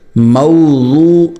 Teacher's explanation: زبان کا سائیڈ والا حصہ اوپر کی داڑھوں کو لگائیں، دائیں طرف یا بائیں طرف یا دونوں طرف، اور نرمی سے نکالیں، موٹا نکالیں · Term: ضاد